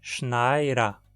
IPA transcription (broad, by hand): ʃnaɪ̯ɾɐ